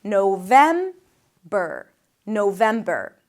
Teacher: Then VEM - that's the primary stress.